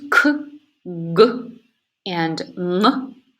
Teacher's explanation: The sounds k, g, and n are articulated at the velum or the soft palate.